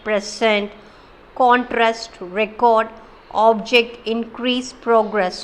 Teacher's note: The word which can be used as a noun as well as verb, that word we are giving stress in the first syllable.